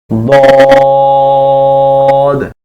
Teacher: 7 number মাখরাজ, জিহ্বার গোড়ার কিনারা উপরের মারিদ্দাতের গোড়ার সঙ্গে লাগাইয়া